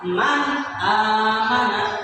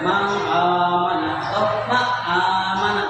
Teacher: apabila ada nun mati bertemu dengan huruf idhar, nah alif ini adalah huruf idhar, maka cara membacanya harus jelas. Ini dibaca nun mati itu man amana, harus jelas, tidak boleh man amana atau ma amana, tidak boleh ya, jadi harus jelas nun matinya.